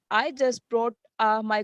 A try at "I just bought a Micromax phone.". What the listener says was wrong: Is it brought or bought? So you need to read it like that. I just bought. Bought nahi, bought. Bought. I just bought a Micromax phone.